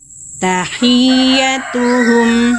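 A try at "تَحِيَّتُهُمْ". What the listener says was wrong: Itu lempeng kan? Tahiyyah. Harusnya tahiyyatuhum. Harus jelas.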